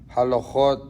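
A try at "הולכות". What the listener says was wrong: When you say halachot, it should be ho.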